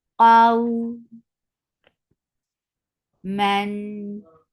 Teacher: Qaf is heavy and this waw is lean. When you are attaching fatha with waw, you are making it soft. Qaw man sifa is tawassut and hukmuhu idhar.